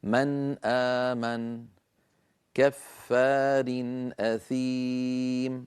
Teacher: لاحظوا أنني عندما أنطق الأمثلة لا أزيد في زمن النون، يعني ولا أجعل دمجا بين النون والهمزة، بل تبقى النون مستقلة تمام الاستقلال عن الهمزة ولا زيادة في غنتها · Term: الإظهار